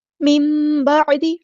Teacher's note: نون ساکن کے بعد با آیا تو ہم یہاں پہ اقلاب ہوگا